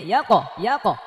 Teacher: কফ যেহেতু মোটা হরফ এই জন্য এটা জবরের মতো উচ্চারণ হবে